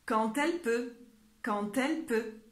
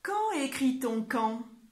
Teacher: quand tu dois les faire, tu dois toujours prononcer /t/ même lorsque QUAND s'écrit avec un D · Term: liaisons